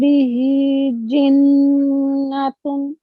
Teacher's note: we have a noon mushaddad here. So we have to make like a strong nasal sound here.